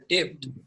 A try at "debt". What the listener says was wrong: এটা বলছি যে ডেপ্ট না, এটার উচ্চারণ ডেপ্ট না, এটার উচ্চারণ হচ্ছে ডেট। হ্যাঁ, ডেট ইউটিলাইজেশন রেশিও, ডেপ্ট বলা যাবে না, ঠিক আছে? আমি যেটা বলছি যে এটা বলা যাবে না, তুমি ওইটাই বলছো।